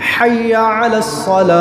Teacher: شروع والا ہا حلق کے درمیان سے، اینڈ والا ہا حلق کے آخر سے